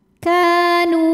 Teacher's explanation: Maka cara baca huruf kafnya adalah panjangkan dua harokat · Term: mad tabi'i zahiri